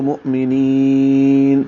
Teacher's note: نی یا مدہ ہے اور نون پہ وقف کر دیں گے، نین کو لمبا کریں گے، مد وقفی بن جائے گی یعنی مد عارض للسکون ہوگی. وقف کر دیں گے تو مؤمنین لمبا کریں گے، نون پہ اظہار کریں گے، آخر والے نون کی زبر ختم ہو جائے گی